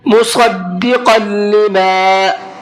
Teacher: صاد کو منہ بھر کے پڑھنا ہے